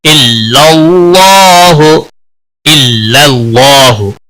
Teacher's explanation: اللہ کے لام کو موٹا پڑھیں گے کیونکہ پچھلے حرف کے اوپر زبر ہے۔ یہ دونوں الف جو بیچ میں ہیں حذف ہو جائیں گے، اور اللہ کا لام موٹا پڑا جائے گا، اس کے اوپر کھڑی زبر ہے، 1 الف کے برابر کھینچ کر پڑھیں گے، ہا وقف کی صورت میں ساکن ہو کر۔